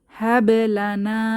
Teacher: না জবরের বাম পাশে খালি আলিফ এক আলিফ টান হবে এখানে বাতে কলকলা বা এর উপরে সাকিন আছে কলকলা করে পড়বো